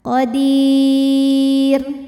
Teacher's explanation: Mad tabi'inya ya sukun didahului harokat kasrah, kemudian huruf yang disukunkannya adalah huruf ra. Kalau berhenti, dalnya ini panjang, boleh 2, boleh 4 atau 6 harokat asal konsisten dalam sekali bacaan. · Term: mad arid li sukun